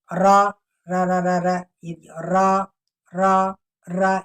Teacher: ایک دفعہ را کو زبان کو اوپر ٹچ کیا، پھر واپس آئے، پھر کیا، پھر واپس، یہ ہو گیا تکرار